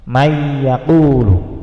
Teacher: maka nunnya nggak dibaca, hilang, langsung yang dibaca huruf ya-nya ya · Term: idgham bi gunnah